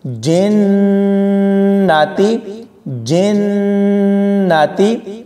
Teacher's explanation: جیم کو نون کے ساتھ ملاتے ہوئے غنہ کریں گے